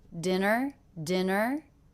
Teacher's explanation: my voice does go up in pitch at the end